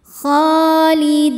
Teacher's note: kholidina di hukumnya mad thobi'i zohiri sebab ada ya sukun sebelumnya kasrah cara bacanya panjang dua harakat